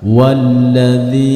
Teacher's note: hati-hati hanya sedikit disentak tidak boleh didengungkan